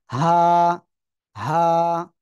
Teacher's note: হা গলার শুরু থেকে মোটা আওয়াজে উচ্চারণ করতে হবে